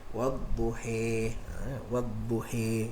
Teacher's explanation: ada yang baca dengan imalah, amala zawatil ya, macam hamzah dengan kisai, maka dia baca wadduhi